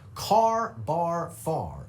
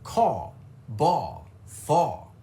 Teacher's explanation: And number one is the dropped R.